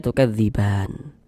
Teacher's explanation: Untuk di sini huruf nunnya nggak dibaca panjang, nggak ada yang dapat memanjangkan huruf nun ini. Karena kita berhenti di huruf yang nggak dibaca panjang, hurufnya kita sukunkan sehingga kita baca tukadziban